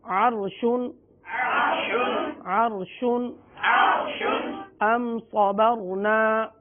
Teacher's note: दोनों रा साकिन है और दोनों से पहले ज़बर आ गई, लिहाजा यहाँ पर रा को पुर पढ़ेंगे